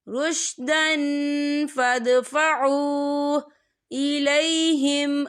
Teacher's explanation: واو ساکن ہے، واو ساکن سے پہلے پیش ہے اور اس پہ چھوٹی سی مد بھی ہے، تو ہم اسے 3 یا 4 حرکت کے برابر کھینچ کے پڑھیں گے۔ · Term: واو مدہ